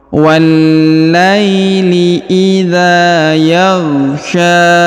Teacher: huruf sya dipanjangkan 2 harokat karena di atasnya terdapat alif kecil dan di depannya terdapat alif bengkok atau alif maksurah.